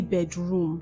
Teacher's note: Whenever you have two syllables, compound nouns, the stress is often placed on the first syllable and not on the second syllable. So when you say bedroom, you have placed the stress on the second syllable. What you should say is bedroom.